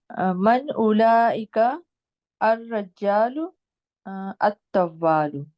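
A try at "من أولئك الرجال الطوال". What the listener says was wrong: را کو جیم کے ساتھ آپ ملا رہی ہیں؟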